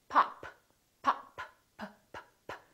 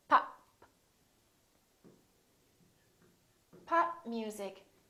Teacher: This is a stop because I'm stopping the airflow.